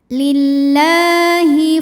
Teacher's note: lamnya ini cukup dibaca panjang dua harakat saja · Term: Mad Thobi'i